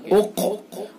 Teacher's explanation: قاف پر پڑھا جائے گا، پر یعنی موٹا منہ بھر کے، اق، اور قاف کے اندر قلقلہ بھی ہوگا، یہ قلقلہ بھی ہوگا قاف کے اندر، اور قاف پر بھی پڑھا جائے گا، چونکہ حروف مستعلیہ میں سے اس لیے پر پڑھا جائے گا، اور یہ قاف ساکن ہے اس لیے اس کے اندر قلقلہ ہوگا۔